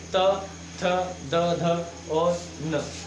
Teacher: आप देखोगे जब हम दंत त वर्ग के बोलेंगे तो इसमें हमारी जो जीभ होगी, जीवा होगी, वो दंत को स्पर्श करेगी,